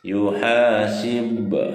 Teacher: Hukum tajwidnya adalah qol qola sugro, karena di tengah-tengah kalimat pantulannya sedikit saja.